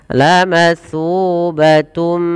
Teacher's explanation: Maka ketika ada huruf gambuna datang setelah huruf yang berharakat tanwin an, in un atau sebelumnya huruf nun sukun, maka masukkan kepada huruf mim. dan kemudian ditahan dengan gunah. Lubatum sepanjang dua harakat baru dilepaskan. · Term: idgham bighunah, idgham bi gunnah